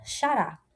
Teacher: Perceba que a sua última sílaba é a mais forte. Quando você vai pronunciar, você pronuncia a última sílaba com mais entonação. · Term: palavra oxítona